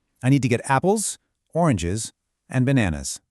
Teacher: When you list a few things, your voice goes up on each item to signal that more is coming. But on the final item, it drops like this. I need to get apples, oranges, and bananas.